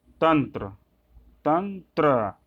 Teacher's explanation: इसी तरह आगे बढ़ते हैं हम, तंत्र को आप देख सकते हो, तंत्र, तंत्र, त्र कैसे बना है, आधा त और र से बना है, ठीक। यहाँ अनुस्वार का उच्चारण होगा जो त वर्ग के मुताबिक होगा